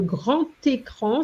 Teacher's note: so the D changes into a T